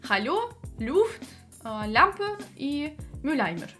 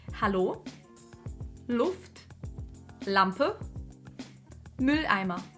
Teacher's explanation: Смягчить нам нужно только саму L. И получиться у нас должны следующие слова: Hallo, Luft, Lampe, Mülleimer.